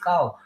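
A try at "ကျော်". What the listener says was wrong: K-Y. Who say Y silent? Oh, you thought Y silent.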